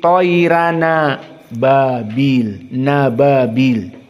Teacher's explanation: Maka dibaca dalam keadaan tarqiq, toira, toiran. Dan juga tanwin di sini bertemu dengan hamzah ababil, maka di sini pun naql